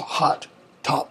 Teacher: Unrounded vowel in hot, top.